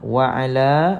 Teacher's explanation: maka kita jumpa dengan mad asli baca panjang berapa harakat Tuan Puan baca panjang dua harkat